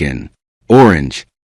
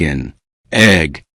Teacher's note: The consonant remains grammatically part of the first word, but in the sound stream, it leans into the second word.